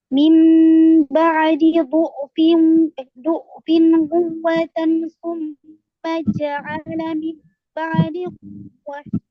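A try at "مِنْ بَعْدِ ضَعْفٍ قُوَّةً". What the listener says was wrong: Iya betul. Begitu.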